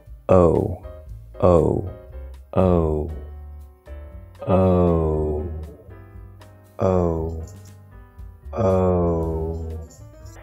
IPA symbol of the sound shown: o